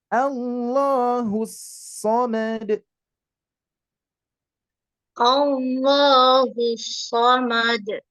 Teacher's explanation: Hu dan kesod ini idgham. Idghamnya betul-betul tidak kerasa panjang hu-nya, Bu. Tidak hus, tapi hus, langsung hus.